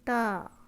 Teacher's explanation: زبان کی نوک اوپر کے سامنے والے دانتوں کی جڑ سے لگنے سے تا ادا ہوتا ہے